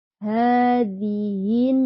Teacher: ha di atas Ha Ada fathah berdiri bacanya dua harakat